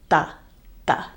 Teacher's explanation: This T is made behind the teeth, ta. It's not th, it's not aspirated. It's different from the English th, it's ta, ta.